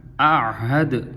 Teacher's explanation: پہلے حمزہ کو بھی ادا کریں گے، پھر عین کی بھی آواز نکالنی ہے، ایسا نہ ہو کہ آہد تھی آہد ہو جائے تو پھر آہد جب ہوگا تو دونوں حمزے پڑے جائیں گے، اور آہد کریں گے تو دونوں عین ہو جائیں گی۔